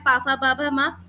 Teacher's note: ओष् है जिसमें मेरे होठ आपस में टच हो रहे हैं।